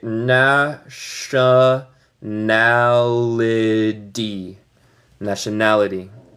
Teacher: En el inglés americano yo voy a decir este T más como R en español.